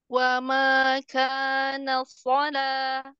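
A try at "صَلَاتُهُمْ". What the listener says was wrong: Ya, punggung lidahnya jangan ikut naik. Sola. Oh, jadi pindah dari yang tadinya tegang terus lemesin. Jangan tegang semua. Coba kalau tegang semua naik semua.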